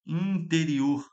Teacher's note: O N está nasalizando o I.